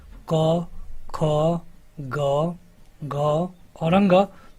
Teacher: अगर हम बात करें क वर्ग की, यानी कि क, ख, ग, घ और अंग, तो इनका उच्चारण स्थान होता है कंठ